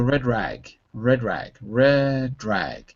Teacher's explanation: I kind of move the D over to the rag and say drag.